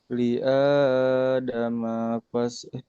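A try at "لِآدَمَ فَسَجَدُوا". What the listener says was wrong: Manya pendek. Ayo hati-hati.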